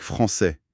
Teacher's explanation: Au masculin, le S final est un fantôme. Rien du tout.